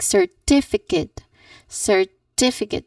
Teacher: So you should stress on the second syllable like certificate.